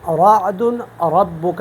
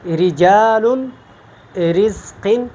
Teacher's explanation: رعد ربک یہ پر پڑھتا ہوں، رجال رزق تو اب یہ میں باریک پڑھتا ہوں۔ تو زیر کی صورت میں آپ نے را کو باریک پڑھنا ہے، زبر اور پیش کی صورت میں پر پڑھنا ہے، زیر کی صورت میں باریک پڑھنا ہے۔